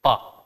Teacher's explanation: प बोलते समय होठ आपस में टच किए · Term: स्पर्शी